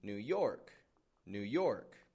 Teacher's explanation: I'm putting stress on the York part, right? The new is kind of quieter.